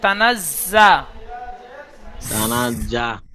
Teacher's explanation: তানাজ্জালুল তানাজ্জালুল নয়, যা যা তানাজ্জা যা, সিটি মারার মতন উচ্চারণ হবে।